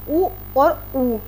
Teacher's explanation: उ और उ ये दोनों जो है हमारे होठों से बोले जाते हैं ओष से बोले जाते हैं इन्हे ओष्ठ कहा जाता है ए